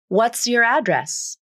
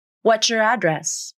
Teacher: the ts ending assimilates with the initial ya consonant and an entirely new consonant is created the ch consonant what's your address the reason why assimilation occurs is because it